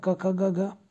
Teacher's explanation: कंठ से क वर्ग पढ़ा जाता है